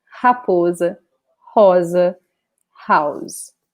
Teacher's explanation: the R in the beginning of a word in Portuguese is pronounced like an H in the beginning of a word